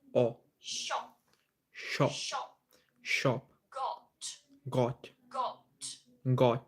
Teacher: So this is very round and very short.